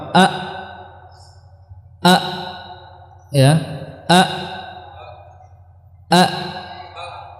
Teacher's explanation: Ketika hamzah maka 2 pita suara dia merapat